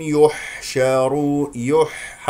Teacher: تخرج الحاء من وسط الحلق مجاوره لحرف العين